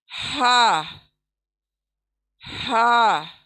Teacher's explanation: ये आएगा आप थर्ड पार्ट से, नीचे के हिस्से, हमारे सीने की तरफ जो हिस्सा है हलक का, गर्दन का जो सीने की तरफ हिस्सा है नीचे से ये अदा होगा, यानी सीने से इस तरह से बाहर आएगा, हा हा, यानी सीने से आवाज आएगी, हा हा। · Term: अक्सा हलक